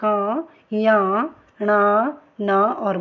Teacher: पांचवा वर्ण है, वो क्या है, नासिक्य है। जब हम इनको बोलते हैं तो क्या है, नाक से आवाज आती है